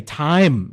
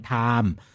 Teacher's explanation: They've actually dropped the I out altogether, and they just turn it into a single vowel.